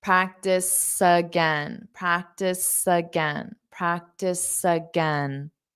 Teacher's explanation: this practice, it ends on an S. So you can hear that S when you say again. Practice again.